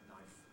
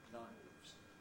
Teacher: we have an irregularity of switching from voiceless to voiced